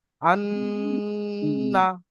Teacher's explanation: চলে গেল না আওয়াজটা, নাকের মধ্যে গিয়ে এক আলিফ পরিমাণ টান হলো। হামজা নুন জবর আন, নুন জবর না, আন না।